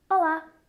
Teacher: really want you to watch out for the L in Portuguese we call this the dark L and it happens low down in our throat